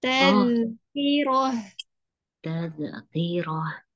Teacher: Huruf dal yang disukun sifatnya kan rohawah ya, dialirkan dulu, ditahan ya. Maksudnya lidahnya jangan langsung dilepas.